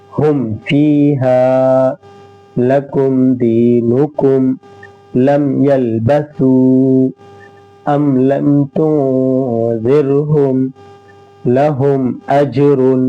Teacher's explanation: اظہار شفوی ہوگا، میم کی آواز کو ہم ظاہر کر کے پڑھیں گے